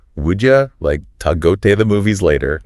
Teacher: would you becomes would ya, to is like ta, and the like disappears before movies.